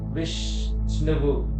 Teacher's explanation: విష్ ఎక్కువ సేపు పలుకుతాం కాబట్టి వి గురువు అవుతుంది